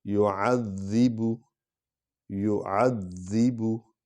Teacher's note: فَيَوْمَئِذٍ لا، فَيَوْمَئِذٍ لا، فَيَوْمَئِذٍ لا يُعَذِّبُ، يُعَذِّبُ، ذال کو ہلکا بھی پڑھیں گے لیکن اس پر شد ہے، یہ مشدد حرف ہے تو اس پر زور بھی آئے گا، یہ دو بار پڑھا جائے گا، شد والا حرف دو بار پڑھا جاتا ہے۔